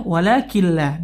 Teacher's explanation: nun sukun bertemu lam ya maka hukumnya nunnya langsung masuk melebur nunnya sudah tidak terdengar lagi